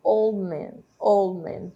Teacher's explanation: A gente não fala old man, old man. O som do D desaparece por conta da elisão, e aí nós falamos old man, como se o D não aparecesse, né?